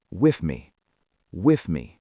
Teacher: A great way to practice this is to isolate those two words, with me, with me. Notice how your tongue comes slightly out between your teeth for the th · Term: th sound